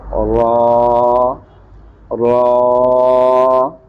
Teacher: زبان کا کنارہ اوپر والے دانتوں کی جڑ سے جو تالوں کی طرف ہے اس کے ساتھ ٹچ ہوگا